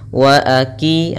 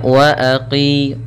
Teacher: qo lebih tebal di sini huruf qof